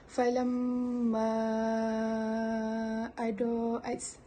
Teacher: Jadi di sini kita baca dekat falamma, dekat huruf mad bertemu dengan hamzah tu dalam kadar harakat 4 harakat